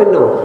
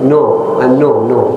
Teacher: لكن في حضرموت يقول نوم، النوم نوم، ليس نو وليس نا، في الوسط